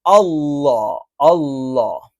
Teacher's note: അഥവാ നാവിന്റെ മധ്യഭാഗം ഇപ്പോ ലാ എന്ന് ഉച്ചരിക്കുമ്പോൾ നാവ് ഇങ്ങനെയാണ് കറക്റ്റ് നിൽക്കുന്നതെങ്കിൽ അള്ളാ എന്ന് ഉച്ചരിക്കുമ്പോൾ എന്ത് ചെയ്യും നാവ് ഒന്ന് ബെൻഡ് ആകും കാരണം നാവിന്റെ മധ്യഭാഗം മുകളിലേക്ക് ഉയർന്നിട്ടുണ്ടല്ലോ